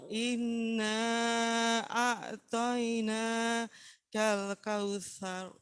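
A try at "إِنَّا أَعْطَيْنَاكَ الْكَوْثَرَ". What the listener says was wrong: Huruf tebal itu semuanya bunyinya o y jangan toina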